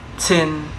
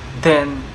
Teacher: They contrast in thin voiceless versus then voice.